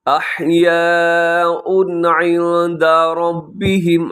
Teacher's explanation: عند میں اخفا ہے، ربهم کا راب پر پڑھیے گا.